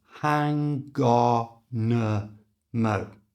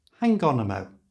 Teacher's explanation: becomes hang on a mo and we did do this by moving the G from the end of hang to the front of on and the N from the end of on to the front of the a so it becomes hangon Mo and in one breath hangon Mo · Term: linked